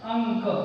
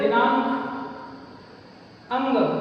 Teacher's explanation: अब इस अनुस्वार का उच्चारण हमें किस ध्वनि में करना है, तो इसका सबसे साधारण सा नियम है कि बाद वाला जो अक्षर है जहां पर ता लिखा हुआ है, तो इस वर्ग का जो अंतिम अक्षर होगा, इस वर्ग का जो पंचमाक्षर होगा, कवर्ग का पंचमाक्षर कहा जाता है अंगा को, तो इस स्थान पर इस अनुस्वार को हम अंगा पढ़ते हैं